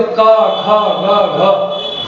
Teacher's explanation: का वर्ग को रखा गया है कंठ।